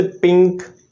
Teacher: तो यहाँ पे जब हम पी को जब यूज़ करते हैं, जब इसको साउंड प्रोडक्शन देते हैं, तो ये वॉइसलेस है। यहाँ पे वाइब्रेशन वोकल कॉर्ड्स नहीं होती पी में। पिंक no vibration.